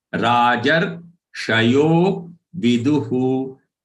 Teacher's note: The visarg at the end of du is to be pronounced as hu and not her.